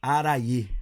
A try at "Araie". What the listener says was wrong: Gente, não é difícil, eu não sei porque as pessoas erram. Araie. Não tem acento, mas é Araie. Não é Araiá.